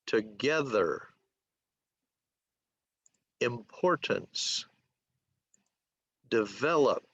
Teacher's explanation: There are three syllables. The emphasis or the stress is on the second syllable.